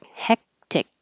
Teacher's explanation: your tongue goes up in the back hectic so my husband's job's really hectic this time of year · both of these c's sound like k's but you don't release the k and say heck tick you won't hear at all it's just · You won't hear k at all. It's just heck. Your tongue goes up in the back.